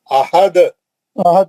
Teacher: دال کے دو پیش ہٹا کے ساکن کرے، خلخل کبرا ہوا نا